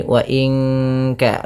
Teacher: Nun mati bertemu kaf, suaranya disamarkan ke kaf, ya, terdengar bunyi wa in ka, langsung kepada makhraj huruf ka, yang dimana kaf makhrajnya pangkal lidah kita, di pangkal lidah.